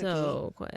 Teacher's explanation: That's called vocal fry.